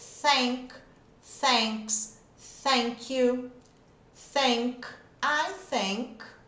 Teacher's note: não usa a voz, porque minhas cordas vocais, quando eu faço ele, ó, tá descansando, nem tô precisando dela. É só o sopro aqui mesmo. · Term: TH é o sem voz